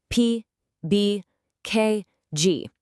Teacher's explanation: For every single one, you have to completely stop the air and then release it in a little pop. They're literally stop and go sounds. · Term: plosives